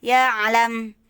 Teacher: Alam di tenggorokan, pangkal tenggorokan yang paling bawah. Lalu ya'lam naik sedikit, ditekannya ke lisanul mizmar atau katup nafas. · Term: huruf ain